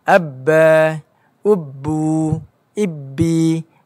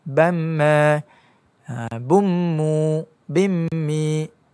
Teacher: Ba kita tekanan yang kuat dan mim adalah tekanan yang sederhana. Tu adalah perbezaan bagi ba dan mim.